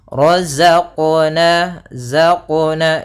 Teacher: Kemudian za sempurnakan za ya za ah dia ada sifat yang namanya sifat ee jahr dan dia sifat rakhawah ya. Za itu rakhawah artinya suaranya mengalir tapi nafasnya tertahan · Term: rokhawah